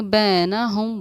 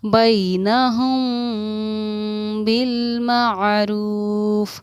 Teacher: जब हमारा मीम साकिन के बाद बाय तो गुन्ना भी होगा और इख्फा भी होगा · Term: इख्फा शफ़ी